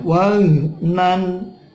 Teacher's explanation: nan itu ada tanwin ketemu ain, dibaca idhar halqi